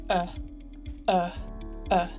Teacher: a schwa and it's pronounced like uh uh not r uh more at the front of the mouth and a relaxed mouth it's the most common sound in british english within words there's